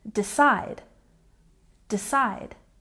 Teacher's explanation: next we have decide with the stress on the second syllable